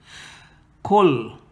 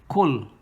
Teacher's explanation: Silence the nun because of this rule of idgham bighayri gunna, without gunna. So there's no nun, no khayshum sound.